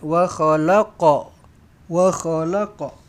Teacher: Wa khalaqna, lantunkan qaf ni, qalqalah sughra.